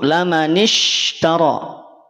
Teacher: Laman ishtara, shin tidak perlu menyuh, tidak perlu mencucu.